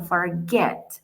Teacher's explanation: Si revisamos, es un verbo más largo, ya no es monosílabo, es bisílabo, lo podemos dividir en dos sílabas, forget, pero La acentuación está al final. Yo no digo forget, sino forget.